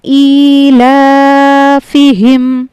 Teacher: ایلافہم، یہاں پہ حمزہ کھڑی زیر ای ہے، اس کو ہم نے ایک الف کے برابر کھینچ کر پڑھنا ہے، ای، اور اسی طریقے سے لام کھڑا زبر لا کو بھی ایک الف کے برابر کھینچ کر پڑھنا ہے، ایلافہم۔